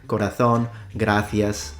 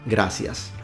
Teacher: the th sound, such as in corazón, gracias, whereas a lot of other Spanish speakers will just render it as a s sound